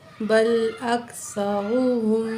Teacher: सा को नरमी से पढ़ेंगे, रा के ऊपर पेश है, पुर पढ़ेंगे